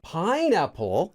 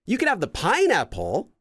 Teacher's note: it goes up and then back down and then back up to the Baseline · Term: intonation